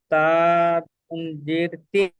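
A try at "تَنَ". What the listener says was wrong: এখানে তো জের নেই, উপরে তো তার উপরে তো জাবার আছে, তা নুন জাবার তান।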